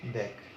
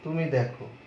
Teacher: তুই দেখ, এখানে এ ধ্বনির উচ্চারণটা বিবৃত হবে, দেখ উচ্চারণটা হবে এরকম, দেখ।